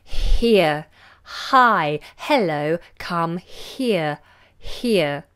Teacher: Some of you, depending on your language, might constrict the H, but we don't do that in English. We make it nice and aspirated. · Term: aspirate H